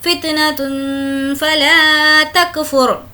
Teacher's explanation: है, फ़ा भी हुर्फ इख्फा में से इसलिए यहाँ पर हमें तनवीन की आवाज़ को नाक में छुपाना है